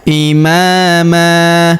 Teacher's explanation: Huruf ma kita panjangkan dua harakat karena terdapat alif di depannya.